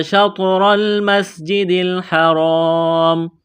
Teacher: یہاں را کو موٹا کرنا ہے زبر کی وجہ سے